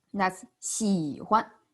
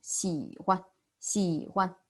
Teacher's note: When 喜 and 欢 together, the second character 欢 is neutral tone.